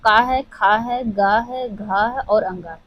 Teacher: क वर्ग के सभी वर्णों का उच्चारण कंठ से होता है।